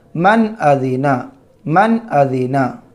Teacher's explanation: نون ساکن کے بعد حمزہ آ رہا ہے تو نون کو ظاہر کر کے بلا غنہ کے جلد پڑھیں گے۔ من، حمزہ زبر آ، دال زیر دی، ادی نون زبر نا، ادینا، من ادینا، من ادینا۔